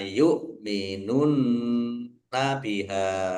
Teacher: nun tasdid bacaan gunnah dibaca mendengung, ditahan biar tampak mendengungnya